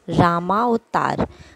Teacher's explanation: राम का अ और अ मिलकर क्या हो गया? आ। राम में अ, म अ अ मिलके रामा, आ रामा अवतार।